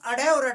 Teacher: उत्क्षिप्त व्यंजन बोलते हैं कि जब हम अड़े और अड़े से बोलते हैं तो हमारी जीभ उछलकर जो है मूर्धन्य को टच करती है